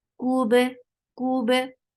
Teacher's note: Kaf is light for Brahma circle your lips, attached with ba. Ba will be light and there will be qalqala.